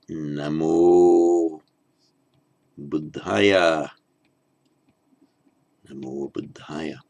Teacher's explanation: the ending before a voiced consonant becomes an O.